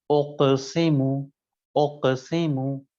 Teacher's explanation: حرف قاف چونکہ استعلا بھی ہے اور قلقلہ بھی ہے، لہذا موٹا اور بلندی کے ساتھ ادا کیا جائے گا